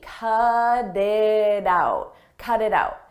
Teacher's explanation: cut it out you'll notice we have T's in between vowels in American English when a t comes between vowels we change that to a d d a very soft D